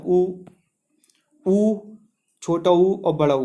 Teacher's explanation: ओंठों से टकराती है, जो अंदर से ध्वनि निकलती है, ओ, छोटा ऊ, बड़ा ऊ, तो ओंठ एक तरह से बंद हो जाते हैं, गोलाकार हो जाते हैं, तो ओंठों से टकराती है, तो उसको ओष्ठ स्वर बोलते हैं।